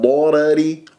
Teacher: والراء الاولى مفخمه لانها مفتوحه والراء الثانيه مرققه لانها مكسوره